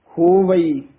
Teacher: ਕਈ ਹੋ ਵੀ ਕਹਿ ਜਾਂਦੇ ਹਨ ੲੀ ਛੱਡ ਹੀ ਜਾਂਦੇ ਹਾਂ ਉਚਾਰਨ ਕਰਨਾ ਹੋਵਈ